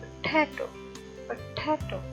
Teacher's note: पा का जो साउंड है वो अनस्ट्रेस्ड है, और टा का जो साउंड है वो स्ट्रेस्ड वन है